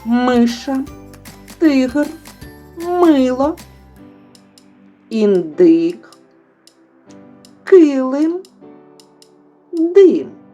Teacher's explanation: рот відкритий кінчик язика відтягнутий від нижніх зубів повітря не зустрічає перешкод Отже Це голосний звук